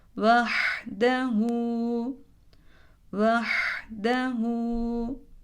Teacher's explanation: zamirden önce gelen dal harfinin hareketi bulunduğu için zamire uzun okunur